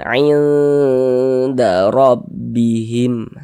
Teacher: Karena makhrajul huruf nun dengan huruf dal ini dia dekat, maka dikatakan aqrab. Maka kita baca samar, bunyi nun sukunnya kita dengungkan. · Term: ikhfa hakiki aqrab